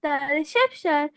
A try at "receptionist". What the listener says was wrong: It is receptionist. See, it is IST. It is the receptionist.